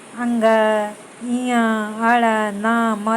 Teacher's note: तो ये हमारे नासिका से यानी नाक से ये वर्ड निकलते हैं